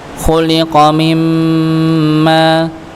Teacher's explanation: nun sukun ketemu mim, maka dibaca idgham bi gunnah, ditahan. Khuliqa mimma, ya, maka ditahan, didengungkan.